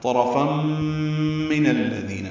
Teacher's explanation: نون کو الذین کے لام سے ملا دیں گے، دال نرمی سے پڑھیں گے اور 2 حرکات لمبا کریں گے · تنوین کے بعد میم آنے کی وجہ سے فم میں ادغام ناقص ہے، غنہ ہوگا، طرفا من الذین، نون کو الذین کے لام سے ملا دیں